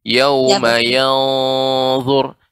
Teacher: lebih lama dilamakan sedikit pada kata yanzur karena ini ikhfa ya, gunnah yang dipanjangkan